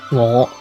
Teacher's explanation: with the fifth tone, or low rising tone